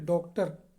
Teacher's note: औ, जो डॉक्टर लिखते हैं, औ भी वृत्ताकार स्वर है। और औ को हम लोग क्या बोलते हैं, विदेशी स्वर बोलते हैं, आगत बोलते हैं, ग्रहित बोलते हैं, या मेहमान स्वर भी कहते हैं इसको।